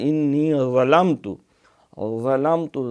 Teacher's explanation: اسی طرح جماؤ سے انی ظلمت، ظلمت ذا جو ہے یہ موٹا ہے، حروف مستعلیہ میں ہے، نہ یہ زال بنے نہ زا بنے نہ ضاد بنے